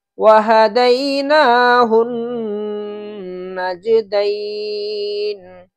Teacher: نون پر تشدید ہے اس لیے نون پر غنہ ہوگا